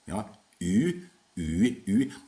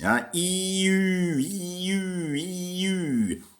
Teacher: A Y represents a rounded front vowel, Ü, rounded Ü, which doesn't exist in English anymore.